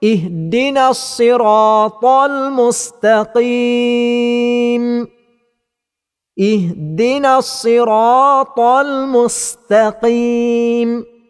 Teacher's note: Huruf sad mesti dibaca dengan tebal dan huruf sin mesti dibaca dengan nipis. Maka pada kalimah al-mustaqim mesti dipastikan baca dengan nipis.